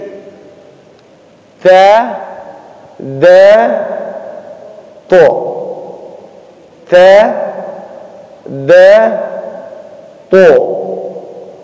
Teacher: Ujung lidah. Pangkal 2 gigi seri atas.